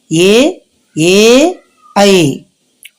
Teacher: కంఠము నుండి అలాగే తాలువు దౌడు నుండి పుట్టేటటువంటి అక్షరాలు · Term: కంఠ తాలవ్యాలు